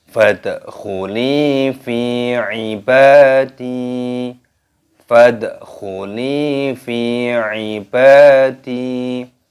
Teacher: Di sini pada huruf dalnya berharokat sukun, maka dibaca qalqalah, dipantulkan.